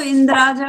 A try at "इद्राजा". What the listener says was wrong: हाँ, ये गलत पढ़ते हैं। इंद्र नहीं है ये, इत राजा है ये।